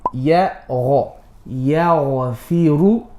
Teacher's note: Here ya is flat. Ghain is going to be heavy.